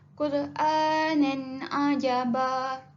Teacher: izhar kita perlu jelaskan bunyi tanwin tersebut. Tidak perlu kita masukkan ain, bunyi ain tu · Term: izhar halqi